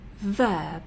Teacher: Because it's at the end, the b is actually quite quiet and it comes out a little bit like a p.